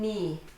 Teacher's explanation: When you have KN at the beginning of a word, the K is silent, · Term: silent K